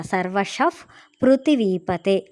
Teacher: పా ముందల విసర్గ వచ్చింది కదా ఇక్కడ, అందుకే ఎఫ్ సౌండ్ వచ్చిందనమాట. సర్వశః పృథివీపతే అని అక్కడ ఎఫ్ సౌండ్ ఇచ్చాము.